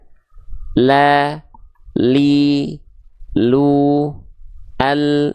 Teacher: dari tepi lidah bagian depan kiri menyusur sampai ke ujung lidah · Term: huruf lam